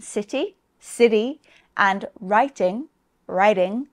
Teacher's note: the letter T can also be pronounced as a small D, sometimes called a flap in some accents, especially in American English. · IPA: /sɪdɪ/